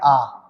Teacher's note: ओठों की आकृति गोल नहीं होती है ओष फैल जाते हैं · आ का जब हम उच्चारण करते हैं तो ओष्ठों की आकृति गोल नहीं होती है, ओष्ठ फैल जाते हैं, इसलिए इसे प्रसृत स्वर भी कहा जाता है।